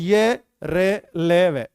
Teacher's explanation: रे कितनी तो कांप रही है, स्वरतंत्रीय खूब कंपन कर रही है। अघोष नहीं है बेटा, सघोष।